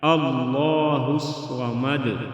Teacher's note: اللہ موٹا پڑھیں گے، صمد میں سواد موٹا پڑھیں گے، اور دال ساکن ہوگا تو قلقلہ کریں گے، اللہ الصمد.